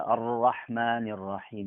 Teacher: ro dikeluarkan dari ujung ataupun kepala ujung lidah didekatkan kak langit-langit kearah langit-langit yang sejajar dengan ujung atau dengan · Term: ra tebal